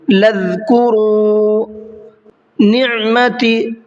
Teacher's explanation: عین کو حلق سے نکال کر کے ادا کرنا ہے۔